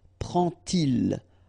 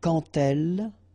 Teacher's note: you won't pronounce it like d to make the liaison, but you will pronounce it like t